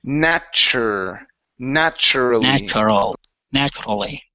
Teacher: when you have a tu together like so. Okay. Um, you can pronounce it like a ch